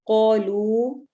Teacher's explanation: قاف کو موٹا پڑھیں گے، الف کو لمبا کریں گے. کیونکہ الف مدہ ہو رہا ہے، واو ساکن ہے، واو مدہ ہو رہی ہے.